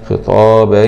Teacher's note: باء فتحتين مع الإدغام بغنة في الياء المفتوحة